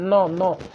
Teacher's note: जो नौ है आपका दंत्य भी है, साथ में साथ नासिक्य भी है, नौ नौ, यानी कि नाक से भी जो है इसकी हवा निकल रही है।